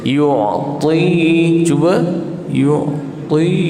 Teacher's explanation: Kemudian ta baris bawah tebal. Ta walaupun dia baris bawah, tebal dia masih ada.